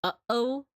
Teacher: actually make a sound it makes something called a glottal stop glottal stop is kind of like when you say uh oh it's that pause between the uh and the O